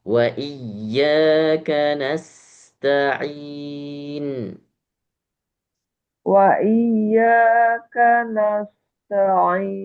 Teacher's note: Nas sin ya ada hamesnya maka dimaksimalkan dulu desisnya.